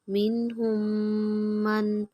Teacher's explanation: میم مشدد پہ غنہ کریں گے